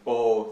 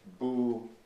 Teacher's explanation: the long o in bo that is now pronounced bu in much of Iran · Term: majhul vowels